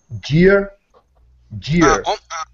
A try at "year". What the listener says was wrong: What you're saying, jeer. And what you want to do is you want to pronounce the word sort of like hierro, right? Where how you start off with the ie. Okay, this is year, year. Okay, start off with an E sound. E, year.